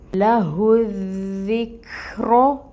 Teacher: را کو ہم نے 2 کاؤنٹس لمبا کھینچنا ہے. را کو ہم نے 2 کاؤنٹس لمبا پڑھنا ہے. · اب اس ہا کو جو اقصاء الحلق سے نکلے گی ہم دال کے ساتھ ملائیں گے، کیونکہ اس کے اوپر تشدید ہے. · کاف ساکن ہے، اس کی ہمس آئے گی. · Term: کھڑی مد